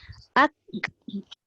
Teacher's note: Jadi bila kita sebut contoh ak, bermakna dia dah meletakkan dua sifat serentak. Satu sifat syiddah iaitu menahan suara kaf. Satu lagi sifat hamas iaitu melepaskan angin kaf.